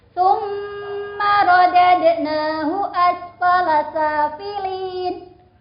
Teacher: Ada mim tasjid, ini bacaan hunnah, maka harus dibaca dengung karena hunnah artinya dengung. Dengung itu tadi sudah saya jelaskan, dengung itu haknya adalah 1 alif atau 2 harokat. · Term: gunnah musyaddadah